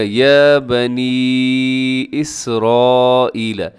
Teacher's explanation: سین کے اندر سیٹی ہوتی ہے اور یہاں بڑی مد ہوگی کیونکہ حروف مدہ حمزہ ایک ہی لفظ کے اندر ہے تو مد متصل واجب۔